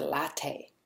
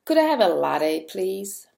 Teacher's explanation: So, for example, we don't flap the T here.